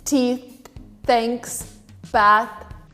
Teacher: You're kind of stopping your tongue with your teeth and you're not letting it go between them.